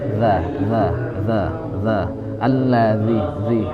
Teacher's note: dia jahar za, tapi dia ada rokhwahnya itu, rokhwah